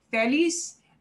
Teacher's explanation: we're supposed to punch the last syllable the way I say feliz